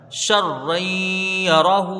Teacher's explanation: ہا کے اوپر الٹا پیش ہے، اس کو ایک الف کی مقدار کھینچ کے پڑھا جائے گا